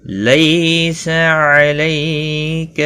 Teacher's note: یا لین ہے، تھوڑا نرمی کے ساتھ کھینچ کر ادا کریں گے، سا کو کھینچنا نہیں۔